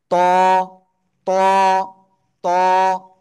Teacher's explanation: উপরে দুই দাঁতের গোড়ায় লাগাবো, লাগিয়ে মোটা আওয়াজে পড়বো। ত, এক আলিফ টানিয়া।